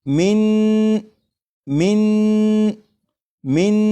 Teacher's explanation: اس طرح پڑھا کہ زبان تالو سے لگا کر پڑھا